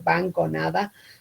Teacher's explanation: la nasal dental y la nasal velar se asemejan porque son nasales y sonoras